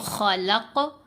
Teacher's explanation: جب ہم پڑھیں گے خلق کی آواز پلٹ کر آئی تو یہ قلقلہ ہے